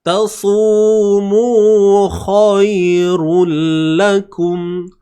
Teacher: Tebalkan kha dan matikan ya yang bersifat lunak ni. Ni bacaan lin lah tuan-tuan.